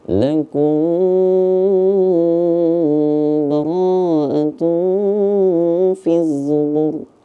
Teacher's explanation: Nah, di sini kita temukan dari kata lakum. Lakum ini mim mati, di depannya ada huruf ba. Nah, maka gimana? Nah, itu boleh kita baca dengung.